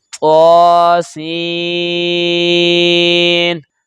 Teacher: نون چونکہ آخر پہ یہ غیر قلقلہ ہے تو آواز لوٹ کر نہیں آئے گی